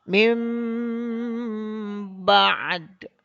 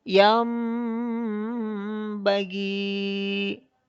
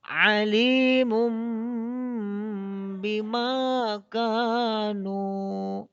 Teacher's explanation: Maka nun mati atau tanwin itu berubah menjadi bunyi mim, serta ditahan 2 harokat. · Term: iklab